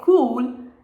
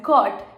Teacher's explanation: So when you say cool you actually lengthen the intensity of O whereas in cot you make it quicker